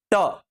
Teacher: ट बोलना है तो आपको दांतों के ठीक समीप अपनी जीभ सेट करनी है ताकि उसके ठीक ऊपर हवा की टक्कर लगे · जीभ लगानी पड़ी ऊपर ताकि हवा आए और ऊपर मूर्धा में टक्कर मार दे। अगर मूर्धा में टक्कर मारेगी तो यह वाली लाइन निकलेगी अन्यथा नहीं निकलेगी।